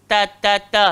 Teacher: Ta, hujung lidah, langgar belakang gigi atas, nipis. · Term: huruf ta